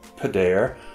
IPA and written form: pə'dær (پدر)